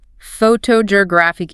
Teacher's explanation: The stress moves all the way to the third syllable. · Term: shifting stress